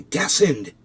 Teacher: he couldn't say the t in between the two syllables and like instead of saying destined he'd say destined he says